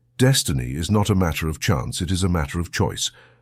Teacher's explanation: of course you will want to emphasize Destiny because it is the main idea of your statement and you will certainly emphasize not otherwise your listeners might think · of course you must emphasize chance because it is one of the two major ideas in the statement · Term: emphasis